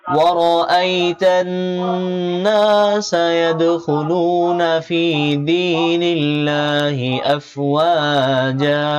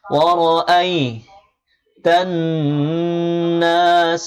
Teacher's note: তা নুনকে ধরেছে, নুনে তাসদিদ হয়েছে, এই জন্য এক আলিফ পরিমাণ গুণনা করতে হবে।